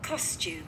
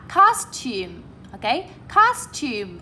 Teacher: Các bạn lên giọng ở âm số 1 và xuống giọng ở âm số 2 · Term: trọng âm